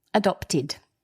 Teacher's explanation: talk about the pronunciation so adopted it's a past participle and because the word adopt ends in a t which is a dental consonant we pronounce the e d id